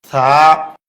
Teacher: বা তা জিহ্বার আগা উপরের দাঁতের গোড়ায় ভিতর দিয়ে লাগবে, মুখ খুলে দিবে, এক আলিফ পরিমাণ লম্বা হবে। তা থা জিহ্বার আগা উপরের দাঁতের আগায় লাগবে, জিহ্বা এবং দাঁতের ফাঁকে বাতাস বের হবে